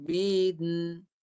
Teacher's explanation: Ba dekat bibir. Ba. Nun dekat belakang. Nun mati. Undur ke belakang. Bin. Bibir jalan ke lidah. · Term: dua bunyi